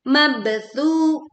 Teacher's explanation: kita pantulkan bak sukun dengan suara yang kuat dan pantulannya miring ya.